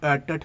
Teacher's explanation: आपकी जो जीभ के आगे का जो भाग है वो मुड़ जाता है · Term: मुर्धन्य